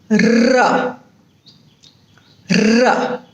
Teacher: Then the next sound is known as roll. In roll, there are a number of rapid taps made by the tongue against the roof of the mouth or some firmer surface in the mouth.